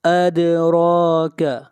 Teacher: دال کے اوپر قلقلہ ہے، آواز کو ہلائیں گے